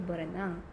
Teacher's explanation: Dalam proses pengembungan prefix bar pada dasar renang, maka bunyi r ada pada prefix bar dilesapkan